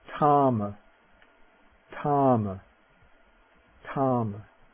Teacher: the voiceless aspirate, it's not like the TH in the or that, just the slight aspirated form